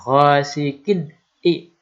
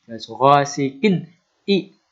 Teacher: Ini ada tanwin, kasroh tanwin bertemu dengan huruf alif yang kasroh, berharokat kasroh. Huruf alif ini termasuk huruf idhar, maka ini dibaca idhar. Tanwinnya itu jelas, dibaca dengan jelas.